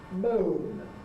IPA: məʊn